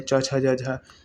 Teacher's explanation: च वर्ग का उच्चारण स्थान क्या होगा? तालु।